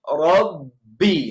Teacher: harus tekan kuat tetapi tanpa keluar angin tanpa menjadi support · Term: huruf b